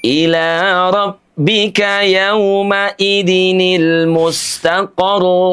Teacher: Nabr itu adalah suara hentakan yang lembut dengan cara meninggikan suaranya di ujung bacaan